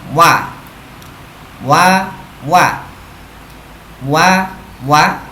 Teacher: huruf Waw juga keluar dari pertemuan antara bibir bawah dan yang atas